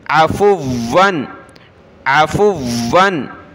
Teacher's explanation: زبر ع فا واو پیش فو واو دو زبر ون فون فا کو واو کے ساتھ ملا کر سخت کریں گے واو کو تشدید ہے